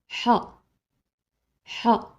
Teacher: c'est une lettre qui vient au milieu de la gorge